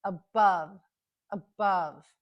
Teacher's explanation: the stress is on the second syllable so that's where we hear the short u which is represented by an o in this case above above